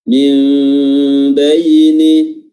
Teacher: Iqlab maksudnya membalik, ya, atau mengganti, yaitu nun yang tadinya huruf nun di sini diganti atau dibalik menjadi huruf mim. Dan dalam mushaf ditandai dengan huruf mim kecil yang diletakkan di atas huruf nun.